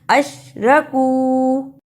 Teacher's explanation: کاف پیش واو کو اس لیے ہم نے لمبا کیا ہے کہ اس پر چھوٹی مد بھی ہے اور یہ واو مدہ بھی ہے، اس کو تھوڑا سا لمبا کرنا ہے۔